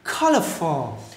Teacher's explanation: nhấn âm đầu các bạn nha